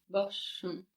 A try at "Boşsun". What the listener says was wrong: The sh is maybe making that S a little bit confusing. So think about them separately. It's all one word, but you can think about it separately still.